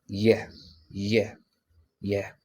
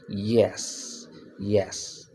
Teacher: point of articulation is palatal or lingual palatal. And the manner of articulation is also approximate.